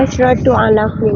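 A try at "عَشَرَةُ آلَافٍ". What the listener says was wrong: Asyarotu. Asya bukan ash, tapi asya. Kalau asyrotu itu belasan. Kalau 10 asya, hanya fathah. Asyaratu alafin.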